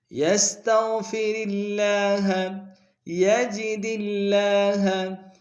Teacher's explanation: لفظ اللہ کو باریک کریں گے